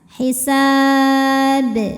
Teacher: Huruf ba-nya dihukumi dengan qalqalah kubro karena ada huruf qalqalah yang dimatikan atau sukunnya karena berhenti ya. Dibacanya dipantulkan dengan pantulan yang besar.